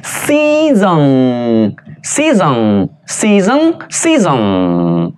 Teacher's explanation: 尾音是开口鼻音啊，舌尖顶的上齿龈哦，气流从鼻孔里面出来啊